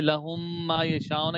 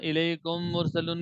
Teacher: مثالیں یہ دیکھیے، لہم ما یشاؤن، یہ میم ہے، یہ اگلی میم ہے، میم کا میم میں ادغام ہو گیا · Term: میم ساکن کا ادغام